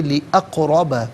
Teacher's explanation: یہ قاف حرف قلقلہ ہے تو یہاں قلقلہ ادا کیا جائے گا، آواز لوٹتی بھی محسوس ہونی چاہیے ، را پر زبر ہے، را کو پر کر کے پڑھیں